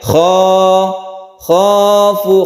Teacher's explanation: kho-nya tersendiri itu adalah halqi atau tenggorokan